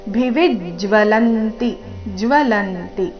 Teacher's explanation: ಭಿವಿಜ್ ವಿ ಮೇಲೆ ಆಘಾತ ಇದೆ